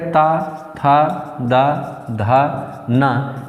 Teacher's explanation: जो त वर्ग है वह बोला जाता है दंत से